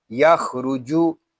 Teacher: جیم زبان اور تالو کے درمیان والے حصے سے ادا ہوگا۔ جب ہم جیم کو ادا کریں گے تو ہماری آواز منہ میں پھیل جائے گی۔